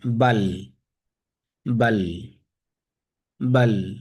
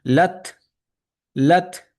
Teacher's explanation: তা উচ্চারণ হয়ে একটু বাতাস মুখ দিয়ে বের হয়ে যাচ্ছে। লাত লাত লাত, হালকা লাত। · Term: হামস